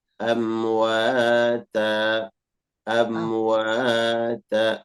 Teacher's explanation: Antara wa dengan ta harus sama panjangnya. 2 harakat ya Ustaz.